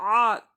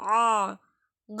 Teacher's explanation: தொண்டை நடுவுல இருந்து வரணும் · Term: ஐன்